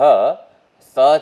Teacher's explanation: સર્વહ સ છે એ દંત્ય સકાર છે